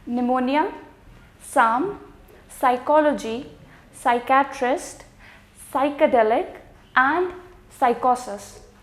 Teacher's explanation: In all of these 6 words, the P is going to be silent.